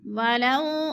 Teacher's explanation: ولو وہ ساکن سے پہلے لام کے اوپر زبر ہے تو ہم نے اس کو، یہ وولین ہے، وولین کو لمبا بھی نہیں کرنا اور جھٹکا بھی نہیں دینا